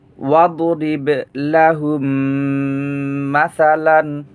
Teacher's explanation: লাহুম গুন্না হবে। মিম সাকিনের পরে মিম আসলে ইদগামে সগিরে মিসলাইন হয়, গুন্না হবে।